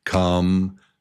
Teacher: Yeah, 3 beats. Number 2 is the strong syllable.